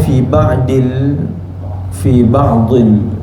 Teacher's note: Bila bacaan fi ba'dil, dhi ini perlu ditebalkan.